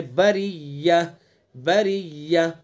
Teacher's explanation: اور بریہ کی جو را ہے، دیکھیں را کے نیچے زیر ہے تو اس لیے اس را کو باریک پڑھیں گے